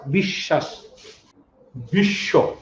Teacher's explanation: বফলার কোনো উচ্চারণ নেই, কিন্তু বফলাযুক্ত বর্ণের অবস্থান যদি শব্দের মধ্যে বা শেষে হয়, তাহলে যে বর্ণের সাথে বফলাটি যুক্ত থাকে তার উচ্চারণ ডাবল হয়